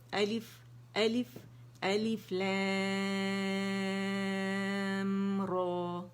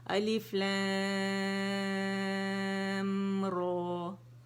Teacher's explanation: الف الف الف لام را، یعنی جو لام کا میم ہے اس کو ادا کیا اور پھر را کا مخرج اٹھایا اور را کو ہم نے موٹا ادا کیا